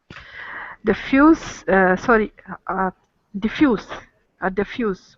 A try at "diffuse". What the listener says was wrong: They're not both pronounced the same way. The first one is diffuse with a Z sound, and the second one is diffuse with an S sound, diffuse.